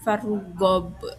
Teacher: huruf qalqalah b berharokat sukun berada di akhir kalimat. Jadi cara bacanya itu dipantulkan keras. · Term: qalqalah kubro